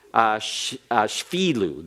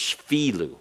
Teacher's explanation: The schwa here in modern Hebrew is not even pronounced. It's shvilu.